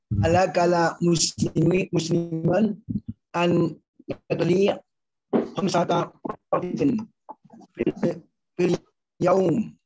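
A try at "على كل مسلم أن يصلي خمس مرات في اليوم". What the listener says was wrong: Iya, oke, bagus.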